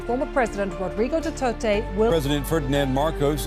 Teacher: One clear phological feature is their strong pronunciation of the ra sound especially in proper nouns like marcos and duterte where the rah is fully articulated.